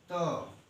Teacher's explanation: त जीभ आपकी कहाँ जाके सट रही है, दांत पे, उसे हम कहेंगे क्या, दंत कहते हैं या तो दांत, दंत।